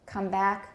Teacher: people think the first one's not stressed but they're both stressed but back sounds more prominent because it carries the tonic stress